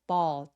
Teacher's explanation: B ball 할 때 볼 아니고 ball. 턱 길게 어 소리에 가깝게 해 주세요